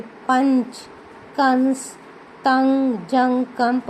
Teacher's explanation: अनुस्वार के उच्चारण में वायु केवल नाक से निकलती है